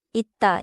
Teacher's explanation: 쌍시옷 becomes a 디귿 sound at the end: 있다 is heard as [읻따] in natural speech.